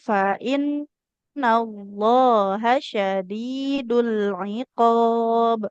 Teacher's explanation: Kemudian nun bertasdid kan harus ditahan.